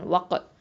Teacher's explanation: தால் வந்து என்ன பண்ணணும், கல்கலத்து சுகரா கொடுக்கணும். அடுத்தது வாவ் ஃபத்ஹா காஃப் சுக்குன் வக், இதுவும் வந்து கல்கலத்து சுகரா